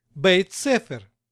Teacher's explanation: два слова произносятся одно за другим без паузы ударение при этом практически полностью переносится с первого слова на второе поэтому второе слово сохраняет свое произношение чего нельзя сказать о первым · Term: слитным произношением